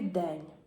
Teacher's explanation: У слові день маємо м'який знак. Він не позначає ніякого звуку, але пом'якшує попередній н.